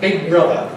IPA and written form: ˈbɪg̚ ˈbrʌðə (big brother)